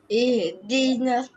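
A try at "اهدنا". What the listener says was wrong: Ihdina tu jangan bagi ada ha pedas.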